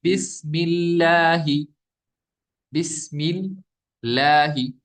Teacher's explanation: اس کے لام سے پہلے کیا ہے، زیر ہے، تو ہم پڑھیں گے باریک